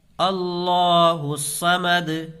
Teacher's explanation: اللہ کے لام کو پر پڑھیں گے، اس لیے کہ اللہ کے لام سے پہلے زبر ہے